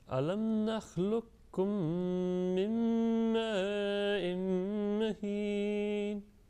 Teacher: Make sure that assimilation takes place of meme plus meme and also tanween and meme.